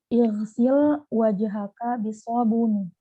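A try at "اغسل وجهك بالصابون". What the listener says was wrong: Ahsan.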